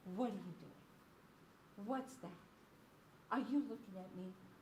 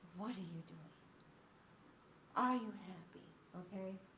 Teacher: if I were to talk to the baby, I would be all over the place, high and low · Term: infant-directed speech